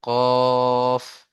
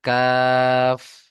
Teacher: এই ধরুন আপনার জিভ আছে, এটা ধরুন আপনার জিভ। এই জিভের শেষ ভাগ তার উপরের তালুর সাথে লেগে উচ্চারণ হয় কফ। আর কাফটা একটু আগে সরে তার বরাবর উপরের তালুর সাথে লাগে এইভাবে, কাফ। বুঝতে পারছেন কফ আর কাফের মধ্যে কতটা পার্থক্য?